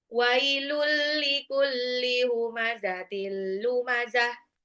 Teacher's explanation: Wailul likulli humazatil tanwin ketemu lam idgham bila gunah juga. Idgham bila gunah itu cuma dilebur doang tanpa ditahan.